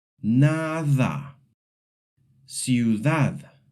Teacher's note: The soft D appears between vowels and sounds a little like the English TH.